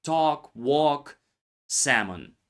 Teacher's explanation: The vowel before the L often lengthens, but the L disappears. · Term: Silent L